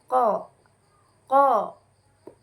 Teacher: ada pada makhraj ini yaitu huruf q jadi cara bacanya adalah terletak pada pangkal lidah bertemu dengan langit-langit atas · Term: huruf qaf